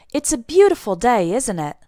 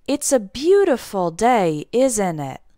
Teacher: notice my intonation it doesn't go up at the end it goes down